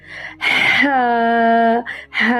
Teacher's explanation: گلے کے درمیان سے وسط حلق سے نکلتا ہے اور ایک انگلی کے برابر، ایک الف کے برابر لمبا کرتے ہیں۔